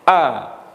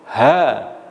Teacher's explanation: syiddah ini tertahan terlebih dahulu, dan huruf ha itu nanti terlepas